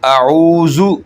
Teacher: اس کا مخرج ہے زبان کا جو کنارہ ہے، یہ آپ اوپر والے دانتوں کے کناروں کے ساتھ جب ٹچ کریں گے تو یہ نکلے گا ذال۔ دانتوں اور زبان کے درمیان میں آپ نے کوئی سپیس نہیں چھوڑنی تاکہ وہ سیٹی کی آواز ظاہر نہ ہو۔